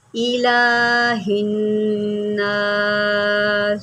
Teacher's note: آپ غور کریں کہ یہ جو حروف صفیریہ ہے، یعنی کہ سین جو ہے حروف صفیریہ میں سے ہے، آپ جو ہے میری سیٹی کو واضح دیکھ رہے ہوں گے